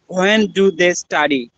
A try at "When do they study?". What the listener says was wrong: আচ্ছা, এটা এখানে h এর উচ্চারণ নেই। when না বলে আমরা when বলবো। When do they study?